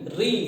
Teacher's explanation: तो आपको यदि पूछा जाए मूर्धन्य, मूर्धन्य का मतलब क्या होता है दोस्तों, जिसके पास बहुत बुद्धि हो, तो आपसे कुछ भी पूछे कि मूर्धन्य की आवाज कहां से निकलती है, तो बोलिए री। री जब बोलेंगे तो आपकी जीभ जो है आगे की नीचे टच होगी, री। देखिए री, ये जीभ टच हो रही है साथियों, तो इसी को प्लेस को कहते हैं मूर्धन्य।